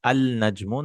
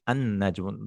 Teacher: No, it will be an-najmu. The lam is totally silent. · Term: huruf Shamsiya